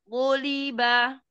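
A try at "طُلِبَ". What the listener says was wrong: Iya, ketika dhammah kepungannya masih berkurang, tapi tebalnya sudah cukup.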